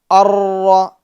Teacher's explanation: جی ناظرین، بہت اہم بات ہے یہاں پر، وہ یہ کہ را کے اندر جو خوبی پائی جاتی ہے، جو صفت پائی جاتی ہے، وہ ہے صفت تکرار، مشابہت تکرار. یعنی جب را کا ہم ادا کریں گے تو را کے اندر تکرار پیدا ہوگی، کپ کپاہٹ ہوگی، اور اتنی بھی زیادہ کپ کپاہٹ نہ ہو، تکرار نہ ہو کہ ایک را کئی را معلوم ہو.